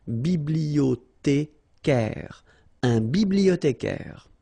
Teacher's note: remember in French the H doesn't exist, so you don't pronounce it